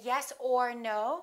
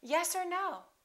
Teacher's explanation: Or becomes er. Just er. Just a consonant er.